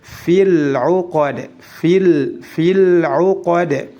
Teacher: dalnya pendek dan dipantulkan karena dalam keadaan waqaf